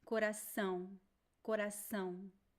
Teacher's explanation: It is a nasal A sound. It is not an M sound. It is ow. Muito bom.